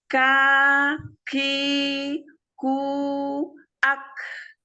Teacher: Temukan dulu makhrajnya, pangkal lidah bagian bawah. Jadi sedikit turun dari makhraj huruf qaf ya, ketemu dengan langit-langit yang keras. Ya. Tempelkan dulu makhrajnya, baru sebutkan harokatnya.